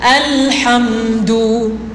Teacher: Dekat mim saya bunyi sampai pangkal hidung.